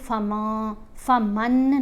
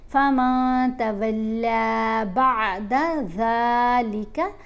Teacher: ہم نے نون کی آواز کو ناک میں چھپا کر پڑھنا ہے اور ایک الف کی مقدار جتنا ٹھہر کر بھی پڑھنا ہے